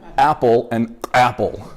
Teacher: The glottal stop is the sound at the beginning of the word apple, like before the A, right? Say apple, your throat's doing this, That's the glottal stop.